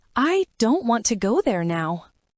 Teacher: The important words don't, go, now are said with more stress. The smaller words like I, to, and there are lighter, faster, and softer.